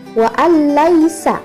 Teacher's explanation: Idgham bila gunnah ini tidak berdengung, maka dari itu bacaannya tidak terlalu ditekan.